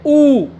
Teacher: पूरे होठ गोल हो गए आपके।